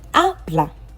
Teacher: I've deepened the a because that's where the stress is. It is the last but one syllable.